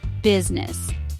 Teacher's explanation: Two syllable word. Stress is on first syllable.